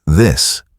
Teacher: For the voiced TH in words like this, vibration appears in the throat.